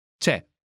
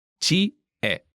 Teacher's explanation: dropping the vowel sound from Ci. makes the phrase C'è. easier to pronounce.